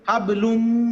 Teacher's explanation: এরপরে হাবলুম, লামের উপরে 2 পেশ, তারপরে মিম, মানে কি তানবিনের পরে মিম, ঈদগামে বা গুন্না, তাহলে গুন্না সহকারে মিলাবেন